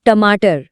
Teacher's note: ट बोलते ही जीभ कैसे गोल घूम कर ऊपर लगी। · तालव्य में जीभ सपाट थी। लेकिन मूर्धन्य में जीभ की नोक मुड़ जाती है। रोल हो जाती है और फिर ऊपर मूर्धा को टच करती है।